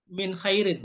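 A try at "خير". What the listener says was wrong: Jangan minnya, kan khair.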